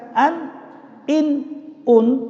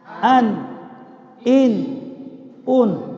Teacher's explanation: Nah, jadi kita baca an, in, un, itu tidak masuk ke dalam makhrajnya khaisum, tidak masuk ke dalam hidung, karena cukup pada makhrajnya, yaitu ujung lidah melekat ke langit-langit, diiringi dengan sifat tawassut bainar rikhwa wasyiddah. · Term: nun mati